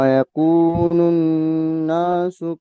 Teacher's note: মাশাআল্লাহ, বলেন এখানে নুনটা, নুনের উপরে তাসদিদ এসছে, নুনটা কি করে পড়তে হবে বলেন তো? নুনকে এক নুনকে আলিফ পরিমাণ গুণনা করে পড়তে, নাকে তুলে গুণনা করে গুণনা করে পড়তে হবে।